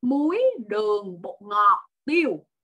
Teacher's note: Vậy thì yếu tố cuối cùng tiêu đó nó sẽ hạ giọng xuống, intonation của các bạn sẽ drop xuống vào cuối câu. Còn các cái thành phần nè, muối, đường, bột ngọt thì mấy bạn cứ lên giọng. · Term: ngữ điệu khi mà liệt kê